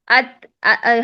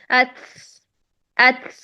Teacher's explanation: تا اور کاف ساکنہ کے آخر میں سین, شین یا ہا کی آواز پیدا ہو جاتی ہے جو کہ لحن جلی ہے.